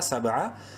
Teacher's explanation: سین با زبر سب، قلقلہ کریں گے با میں، حروف قلقلہ میں سے ہے اور ساکن ہے